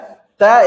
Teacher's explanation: तय एक अघोष तथा अल्प प्राण व्यंजन है, व्यंजन वर्ण है। इसका उच्चारण स्थान दंत है।